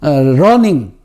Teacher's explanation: 혀가 긴장을 유지한 채로 입천장에서 떨리는 그런 발음이기 때문에 륨이라는 음이 기피되는 경우가 많습니다.